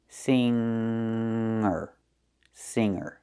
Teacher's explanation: We don't make the hard g sound in this word. It's just a nasal m m for the ng.